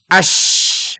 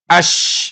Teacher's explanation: shin itu di lisan tapi agak maju dengan suara besar. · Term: shin besar